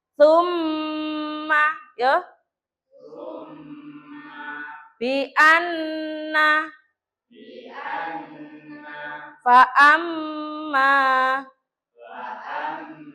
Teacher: tsumma bianna faamma praktikkan ya tirukan bu guru ya jadi mim mim tasjidnya atau nun tasjidnya didengungkan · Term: ghunah